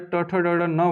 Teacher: ट ठ ड ढ न वाला, इसका उच्चारण मूर्धा से किया जाता है